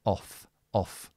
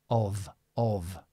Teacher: So the difference between these two is this is an F and this is a V. But what's the difference between the F and the V? Your voice. Only your voice. So this is with your voice, of, of.